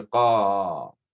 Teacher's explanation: Then you have an alif. That alif indicates that that qa needs to be longer. Instead of qa, it needs to be qa. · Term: alif mad